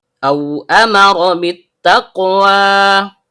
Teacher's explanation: Mim adalah huruf labial, ra dibentuk oleh ujung lidah yang bertemu dengan bagian belakang langit-langit mulut. Karena ra memiliki fathah, aturan pembacaannya tebal atau tafkhim. · Dimulai dengan hamzah dalam bentuk alif atau hamzah qat yang berasal dari tenggorokan bagian bawah. Karena hamzah qat' memiliki fathah yang diikuti oleh sukun waw yang keluar dari bibir , maka terjadilah pembacaan lin.